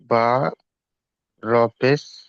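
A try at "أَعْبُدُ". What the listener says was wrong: ওই র কই? বা পেশ বু, দাল পেশ দু, বুদু, আ বুদু।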